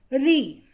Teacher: री को जब हम बोलते हैं तो हमारी टंग मूर्धा का स्पर्श करती है, छूती है।